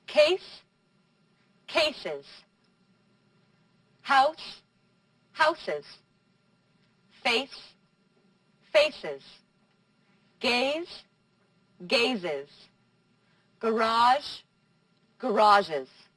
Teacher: You have to pronounce the final E in these words when you add an S. And you get an extra syllable.